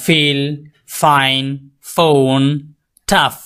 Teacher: sound lower lift touch আপার teeth আপনার হচ্ছে নিচের ঠোঁট উপরের দাঁত স্পর্শ করবে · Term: লেবিওডেন্টাল সাউন্ড